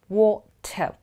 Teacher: water water please note my mouth or my lip movement water notice the way my lip is becoming round